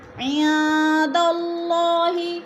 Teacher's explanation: قل ما، ما میں الف مدہ، عند اللہ، عن میں اخفا ہو رہا ہے، نون ساکن کے بعد دال آ گیا تو ادھر اخفا ہے، اللہ پر پڑھا جائے گا، اللہ سے پہلے لفظ دال کے اوپر زبر ہے تو اللہ کو پر کر کے پڑھیں گے